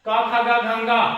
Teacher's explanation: क वर्ग का उच्चारण कहां से होगा, कंठ से होगा